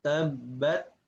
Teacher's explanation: dia ketika sukun keluar anginnya itu disebabkan karena dilepaskannya dari makhrajnya. Ini ditempelkan tak. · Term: sifat hamasnya